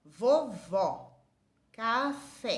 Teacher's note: o acento agudo ele tem um timbre aberto o que é isso ele fica mais forte ó vovó café